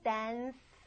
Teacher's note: dance 안 울리고 있거든요. D도 안 울립니다. 그래서 이 D 발음이 하다 울리던 입모양 그대로인데 이번에 여러분 성대만 쓰지 않으시면 돼요.